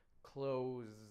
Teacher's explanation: And if you put your fingers up, Z, close, close, closed. And you know that Z is voiced, and therefore the ED sounds like D